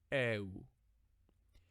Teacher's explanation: For early high Koine, the epsilon would be pronounced a little longer, like eu. And finally, modern is just a combination of eta and upsilon in diphthongs, Eve.